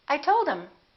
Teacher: instead of saying I told him, we just drop the H and we say I told him.